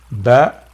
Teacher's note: Origination point. Ba from the lips.